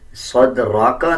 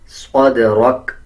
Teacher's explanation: اکثر لوگ صاد اور سین میں کوئی بھی فرق نہیں رکھتے بلکہ صدرک پڑھ دیتے ہیں، صدرک نہیں، صاد کو موٹا پڑھیں گے، دال پہ قلقلہ کریں گے، اسی طرح را کو پر پڑھیں گے یعنی موٹا پڑھا جائے گا۔ اور جب وقف کریں گے یعنی آیت کمپلیٹ کریں گے تب کاف کا جو زبر ہے اس کو سائلنٹ کر دیں گے، صدرک نہیں پڑھا جائے گا بلکہ وقف کرتے ہوئے صدرک اس طرح پڑھا جائے گا۔